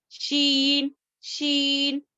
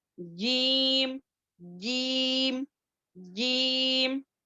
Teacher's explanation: اور شین تھوڑا گیپ ہوگا، یہ تو جیم اچھے سے تالو پر ٹچ ہوگا، اب یہاں پر دیکھیں غور کریں تھوڑا گیپ ہوگا شین میں، شین، شین، ٹھیک ہے۔